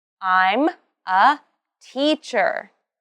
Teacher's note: And you need to put the stress on the job title.